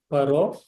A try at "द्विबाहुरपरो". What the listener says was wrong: No, ra is full, not half. Bahura. No, ra nasti. Ra.